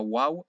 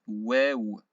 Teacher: on ne dit pas waouh, on dit wew, pas d'équivalent. Ça vient du fond de la gorge. Un peu comme quand on est malade et qu'on essaie de faire sortir un peu des choses de notre gorge, on dit et ben là on dira pareil.